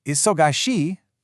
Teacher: let your voice rise at the end. So it just becomes isogi.